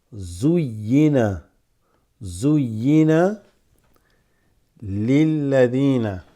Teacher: We got a zu, but we got a shadda on the ya, so that doubles